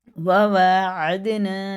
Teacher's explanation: حرکات والے حروف کو تھوڑا بھی نہیں کھینچیں گے، لیکن واو کھڑا زبر وا اسے ایک الف کے برابر کھینچیں گے۔ عین کو دال میں لگاتے ہوئے، دال میں قلقلہ ہے